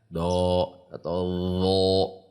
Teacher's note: Yang penting tidak di ujung lidah. Usahakan sepanjang pinggir lidah.